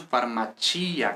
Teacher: Pero si, por ejemplo, yo digo farmacia, que curiosamente, o sea, lógicamente en español es farmacia, pero en italiano es farmacia, con acento en la i